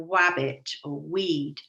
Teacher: children cannot pronounce their r sound and it comes up as a w